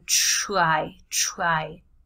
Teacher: very often in spoken American English, you don't have that strong T when there's T and R together in a word